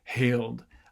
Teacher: the h though uh winds up being a breathy voice stage uh just because it's in between other voiced things